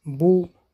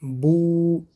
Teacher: مثال ها بو شکل زبان را ببینید. بو قفای زبان به بالا برداشته می شود و لبها گرد کرده به پیش برآورده می شوند